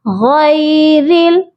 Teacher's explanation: را کو ہم لام کے ساتھ ملائیں گے، اور درمیان میں الف ہے جس کے اوپر کوئی حرکت نہیں ہے، اس کو ہم چھوڑ دیں گے۔ غیرل، غین ہیوی لیٹر ہے، اس کو ہم موٹا کر کے پڑھیں گے